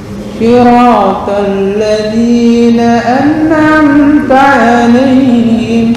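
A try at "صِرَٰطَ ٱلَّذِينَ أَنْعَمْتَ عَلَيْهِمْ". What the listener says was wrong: Turunnya belum lah. Ini harusnya pas turun.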